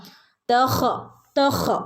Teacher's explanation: okay ഫീഹിലറൂൻ തഹയ്യ ഹിന് നമ്മുടെ തൊണ്ടയുടെ മുകൾ ഭാഗത്തുനിന്ന് തൊണ്ടയുടെ അക്ഷരമാണ് ഹ തൊണ്ടയിൽ നിന്ന് വരുന്ന അക്ഷരമാണ് ഹ